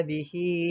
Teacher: Kita juga boleh mengenal pasti mad silah qasirah ni dengan mencari tanda waw kecil selepas ha yang berbaris dhammah ataupun ya kecil selepas ha yang berbaris kasrah. Kadar bacaan bagi hukum mad silah qasirah ni pula dibaca dengan kadar 2 harakat sahaja ketika menyambungkan bacaannya